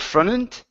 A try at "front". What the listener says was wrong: you added an extra vowel sound in between the n and